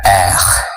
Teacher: disuarakan dari belakang lidah gitu, dari ujung tenggorokan